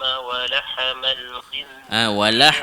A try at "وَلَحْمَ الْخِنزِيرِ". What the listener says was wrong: Walah tu jangan walahma. Walahmal. Jangan walahmal. Jangan lantun.